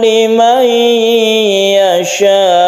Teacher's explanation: nun mati bertemu dengan ya, ini adalah idgham bi gunnah, kita panjangkan juga. Limai panjangkan atau dengungkan ketika kita bertasydid ya ini.